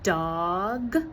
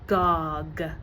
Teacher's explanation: sounds that are supposed to be produced with the front of the tongue are produced with the back of the tongue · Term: backing